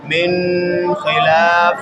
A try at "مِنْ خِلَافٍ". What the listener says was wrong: غنہ نہیں ہوگا نا آگے خو آ گیا.